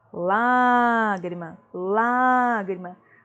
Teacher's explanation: Uma proparoxítona, na antepenúltima sílaba, né? Antepenúltima.